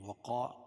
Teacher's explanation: الف سے پہلے زبر ہے، الف مدہ ہوگا، اس کو 1 الف کے برابر کھینچ کے پڑھیں گے